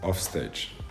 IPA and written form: ɒfˈsteɪdʒ (OffStage)